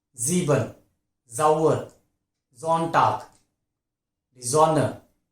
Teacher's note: These are all the words that begin with S and with the vowel immediately after S. Sound would be Z, buzzing sound.